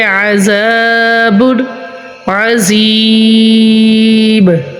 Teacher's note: زال کے آگے الف ہے، ادھر الف مدہ کا قاعدہ ہوگا تو ہم ادھر زال کو 1 الف کی مقدار میں لمبا کریں گے